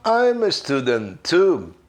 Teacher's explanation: como a palavra student acaba com T e a palavra to começa com T, eu, na hora de pronunciar, eu mato o som de T da palavra anterior, porque senão fica cacofônico, fica parecendo uma pessoa gaga falando.